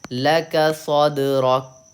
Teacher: صد پہ قلقلہ کرنا ہے لیکن رک پہ نہیں کرنا ہے